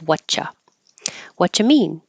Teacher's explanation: the T and the Y next to each other make a cha